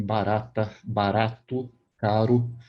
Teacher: esse R que a gente tem, por exemplo, em barata, barato, caro, ele vibra aqui, né, atrás dos dentes, ele não é feito aqui atrás, como depois eu vou mostrar para vocês do alemão. · Esse tipo de som, esse R mais fácil, mais feito aqui na ponta da língua, né? Batendo ali nos dentes atrás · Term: vibrante, vibrante alveolar sonora